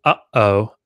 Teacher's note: you have to close off your throat to say uh-oh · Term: glottal stop